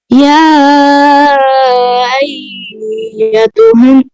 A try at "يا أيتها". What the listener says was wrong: نہیں، تلفظ صحیح نہیں آ رہا، تلفظ صحیح نہیں آ رہا. یا ایتو، ایتو، یا کے مد بھی کریں.